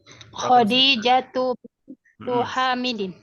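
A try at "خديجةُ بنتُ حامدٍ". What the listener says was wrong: Bintu tidak, bintun.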